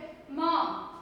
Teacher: दोनों होठ हमारे मिलते हैं